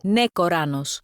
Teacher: one of the voice actors moves the stress from the first to the second syllable.